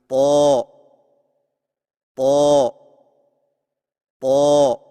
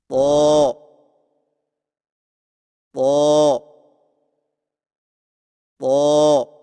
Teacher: طا کی ادائیگی میں زبان کی نوک کو سامنے والے اوپر کے دو دانتوں کی جڑ سے لگا کر اور زبان کے پچھلے حصے کو تالو کی طرف بلند کرتے ہوئے موٹی آواز میں پڑھیں، یعنی طا طا طا۔